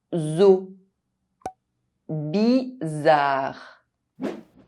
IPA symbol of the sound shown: z